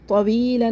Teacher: وی ہونٹوں کو گول کر کے پڑھنا ہے